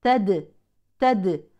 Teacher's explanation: الدال من حروف القلقله اتت ساكنه اذا تقلقل